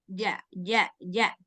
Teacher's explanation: bersih dari suara angin karena dia enggak punya angin huruf Jim